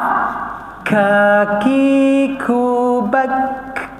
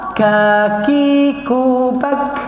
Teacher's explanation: Bak yang keluar tu angin. Bukannya yang qalqalah huruf qaf.